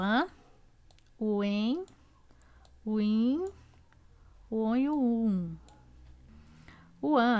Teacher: nas vogais nasais o ar sai pela boca e pelas fossas nasais ou seja pelo nariz daí o som é anasalado